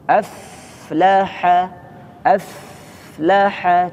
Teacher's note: Yang kedua fa sukun, aflaha, aflaha dialirkan terlebih dahulu.